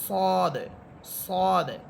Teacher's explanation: এরপর হচ্ছে সদ, সদ এটা মোটা হরফ, আওয়াজ মোটা করে পড়বেন, মুখ ভরে বলবেন